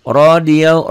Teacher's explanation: rohnya dibaca tebal karena baris di atas